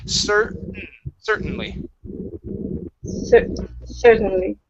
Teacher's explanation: Okay, skip the T. We don't pronounce the T at all. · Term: swallow T